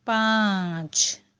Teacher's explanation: پانچ کے نون کو ہم نون نہیں بلکہ غنہ کریں گے۔ غنہ ناک میں آواز لے جانے کو کہتے ہیں۔